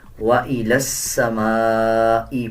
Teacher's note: لام کو سین کے ساتھ ملا کے پڑھا جائے گا